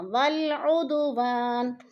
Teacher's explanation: ادو پہ قلقلہ ہو رہا ہے، دال ساکن ہے اور حروف قلقلہ میں سے ہے